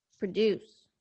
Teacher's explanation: when you stress the second syllable in the verb, you must de-stress the first syllable down to a schwa